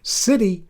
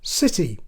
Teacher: It's the thing that makes words like city so different from the way I say them, city. We call the sound in the middle of city a flap or tap of the tongue.